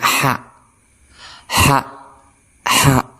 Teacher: Nah, di gambar ini ada yaitu cara makharijul huruf daripada ha ini, yaitu di tengah-tengah tenggorokan dengan cara lidahnya lurus, diambangkan secara lurus. Oke, kita bunyikan ha, ha, ha. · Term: huruf hijaiyah ha